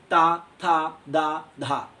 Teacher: तावर्ग आपका क्या है, दंत है। दांतों से जीभ टकराएगी।